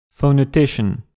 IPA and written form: ˌfounəˈtiʃən (phonetician)